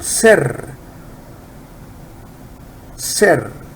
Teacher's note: you have to roll your R very well